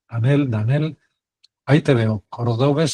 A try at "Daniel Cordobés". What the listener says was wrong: No, Daniel con acento en la A y cordobés con acento en la E.